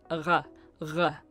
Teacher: So if we think about French and German, for example, a R is a sound produced much further back in the mouth. So it sounds like R, R.